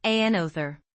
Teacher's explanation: notice that another has 3 syllables, another. Emphasize the second syllable, another. That helps with clarity.